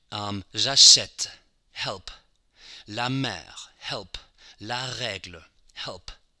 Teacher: It's a very open E, like in the English word help.